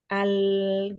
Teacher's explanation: bunyi yang mengalir hanya sebagian ketika mengucapkan huruf lam itu disebabkan karena terhalangnya oleh ujung lidah